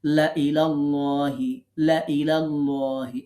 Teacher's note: এখন এই লা ইলাল্লাহি লামকে আমরা টানবো না